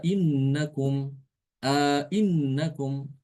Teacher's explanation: jadi hamzah yang kedua dibaca jelas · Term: tahqiq dengan idkhol